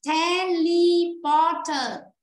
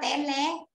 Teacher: Vì vậy trong âm nó rơi vào âm tiết thứ 3.